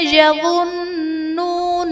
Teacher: نون مشدد ہے، یہاں پر غنہ کر کے پڑھیں گے۔